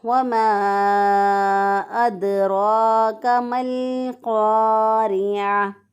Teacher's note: را جو ہے اس کو پر پڑھیں گے کیونکہ را کے اوپر کھڑی زبر ہے · دال پر قلقلہ ہوگا کیونکہ دال جو ہے حروف قلقلہ میں سے ہے